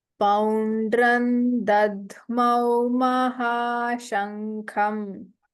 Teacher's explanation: Yeah, it's a dadhmau. So the alpa prana and immediately after that mahaprana dha. So poundran dadhmau mahashankham.